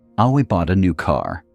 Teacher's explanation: Stress falls on new to emphasize that detail. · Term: sentence stress